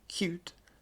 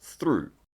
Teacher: RP uses yods, so you can hear a y sound in cute, but not in through.